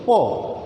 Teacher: উপরের এবং নিচের দুইটি ঠোঁট একত্রিত হচ্ছে